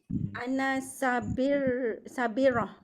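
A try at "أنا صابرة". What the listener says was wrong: Panjang bagi cukup panjang. Sabirah.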